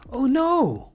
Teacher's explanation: The reaction is usually short and immediate and no is usually quite long and high-pitched.